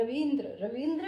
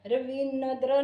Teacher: इ की आवाज आ रही है और आधा न है। इसलिए हमने न पे जोर नहीं डालना।